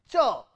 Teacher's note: So, tip of the tongue touches the dental region to produce the plosive part, and after the plosive, tongue is curled, the tongue is pushed back and touches the post-alveolar region to produce the friction. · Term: affricate